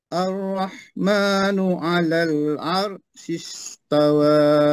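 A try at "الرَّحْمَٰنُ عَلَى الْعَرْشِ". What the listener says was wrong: Ringan sangat tu pada lam tu.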